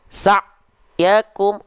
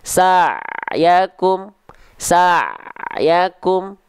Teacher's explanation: pertama dia terlalu mengalir sayyakum yang kedua dia terputus sa' yakum harusnya di antara putus dan mengalir yaitu tengah-tengah sedikit ngalir